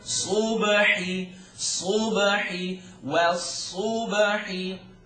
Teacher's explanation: Ba bounces because it's one of the 5 letters that bounce.